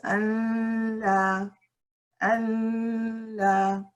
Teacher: The second one with a noon will be pronounced Allah, Allah. So you have the ghunna left over mixed with a lam.